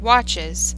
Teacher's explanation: the end of the word which does not receive any stress the stress in the word is in the root word watch